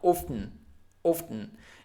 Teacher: this T is almost muted, so don't say often, but often.